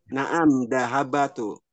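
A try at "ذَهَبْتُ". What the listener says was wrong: Zahabtu. Ah itu salah. Maksudnya ba-nya sukun ya. patah.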